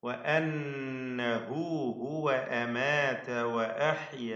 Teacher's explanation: അമാത വഅഹ്യ, ഈ വചനത്തിൽ തഫ്ഖീമിന്റെ ഒരു അക്ഷരം പോലും ഇല്ല. എല്ലാം ഇസ്തിഫാലിന്റെ തർക്കീഖ് ചെയ്ത് ഉച്ചരിക്കേണ്ട അക്ഷരങ്ങളാണ്.